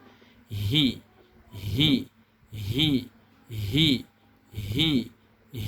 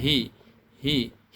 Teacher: huruf H harus kita bunyikan sumbernya dari tenggorokan paling bawah